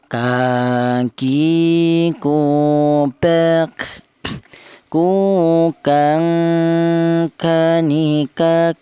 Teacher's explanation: Huruf kaf ini keluarnya huruf berasal dari pangkal lidah. Pangkal lidah itu lidah bagian belakang, di mana lidah bagian belakang itu ditempati 2 huruf, yaitu huruf kaf ini dan huruf qaf.